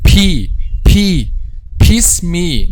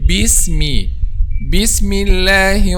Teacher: there is no excessive air when pronouncing the excessive air again is one of the most common mistakes